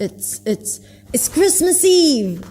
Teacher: he kind of like stresses everything except for it's